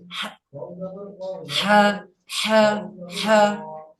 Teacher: এই যে হাটা, এটা ছোট হা ভাই, এটা ছোট হা, এটা বড় হা। বড় হা কিভাবে পড়তে হয়, হলকের মধ্যে হতে আওয়াজ চাপ দিয়ে